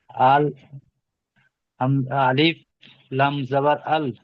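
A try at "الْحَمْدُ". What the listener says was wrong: হামজা আলিফ এখানে নাই, হামজা লাম জাবার আল পড়েন।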